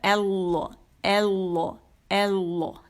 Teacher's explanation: اچھا، یہ آ کر کے ہم پڑھتے ہیں تو یہ آ نہیں ہے، یہ اے ہے، اے. ٹھیک ہے، اور لا موٹا ہوگا